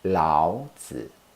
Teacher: Lao is in the 3rd tone and Zi is also in the 3rd tone. It's a bit tricky when 2 words in the 3rd tone appear one after another. When this happens, the first has to be pronounced in the 2nd tone instead.